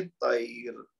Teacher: اب طیرن ہم نے پورا پڑھا ہے تو پھر تو را کو موٹا پڑھیں گے, لیکن اگر یہاں پہ ہم رک جائیں تو ہم پڑھیں گے طیر, پھر را باریک ہو جائے گی